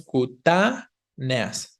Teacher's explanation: Si lleva tilde, porque hay hiato entre la E y la A, pero la vocal tónica no es la E, es la primera A, ¿no?